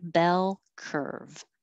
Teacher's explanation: hold your tongue in the l position longer for the final l in bell so that it can be heard